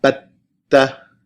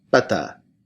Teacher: Shadda means intense, and it basically doubles the length at which you hold the consonant. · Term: doubled